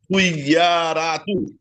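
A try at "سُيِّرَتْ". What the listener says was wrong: সিনের উপরে পেশ, ইয়ার উপরে তাসদিদ আছে, নিচে জের আছে। তো ইয়া দুইবার পড়তে হবে, প্রথমবার এই হরকতের সাথে সিন ইয়া পেশ, সুই সুই সুই সুই, ইয়াজের ই, সুই ই সুই ই, র তা জবর, এটা পেশ না, এটা সাকিন। র তা জবর রত, রাত নয় রত।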